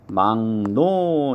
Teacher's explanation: 자, 3번 막노는 기역하고 리을하고 만나면 기역의 비음이 이응입니다. 기역은 이응으로 바뀌죠. 그러면 리을도 니은으로 바뀝니다. 그래서 둘 다 바뀌어서 발음을 할 땐 막노 이렇게 비음화가 일어난다 라는 걸 우리가 살펴볼 수가 있습니다.